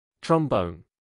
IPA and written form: trɒmˈbəʊn (trombone)